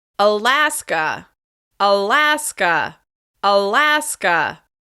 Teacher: This state is stressed on the second syllable.